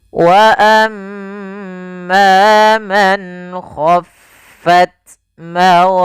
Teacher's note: ada mim tasydid, bacaan gunnah, yaitu suaranya menahan dulu suara nya sepanjang 2 harakat